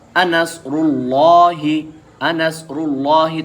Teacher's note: جیسے انصر اللہ، انصر اللہ، تو لفظ اللہ سے پہلے اس وقت را کے اوپر پیش ہے تو لفظ اللہ کا لام موٹا ہو کر پڑھا جا رہا ہے